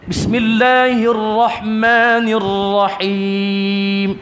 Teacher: Ra takrir mesti disebut dengan sedikit getaran.